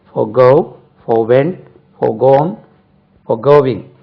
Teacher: forgo forwent FORE forwent forgone WENT forwent forgone FOREGONE forgone forgoing FOREGOING forgoing forgo உச்சரிப்பு forgo stress lies on the second syllable.